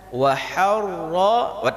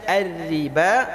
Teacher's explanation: baca harra tebal. Tapi ketika kita baca ar-riba dibaca tipis.